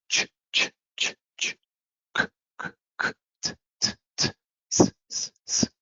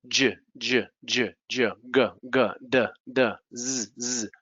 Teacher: I'm not using my voice, I'm just using the air. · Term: unvoiced consonants